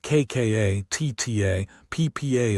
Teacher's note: Tense kka is tight and abrupt with no air. · Crucially, unlike the aspirated sounds, there is no puff of air. If you hold your palm to your mouth, you should feel almost no breath.